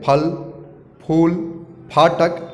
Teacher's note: फ का उच्चारण दोनों होंठ को चिपककर एक साथ अलग होने से होता है। फ को इंग्लिश में PHA लिखते हैं, तो वहीं फ से फल, फूल, फाटक आदि आदि।